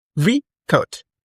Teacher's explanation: The first stress pattern rest on the first syllable.